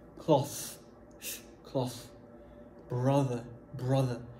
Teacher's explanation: Tu vas tirer ta langue. Okay, tu souris, tu tires ta langue et tu souffles sur tes dents du haut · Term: son TH